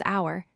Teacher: we pronounce it as hour, just saying ow-er without the H sound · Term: silent H